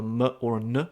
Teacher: You make it somehow more nasal. You make it into a muh or a nuh sound. And that you basically you find that with the accusative case in Old Irish grammar and that's because basically the sound the word that preceded it used to end in some sort of nasal ending. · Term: nasalize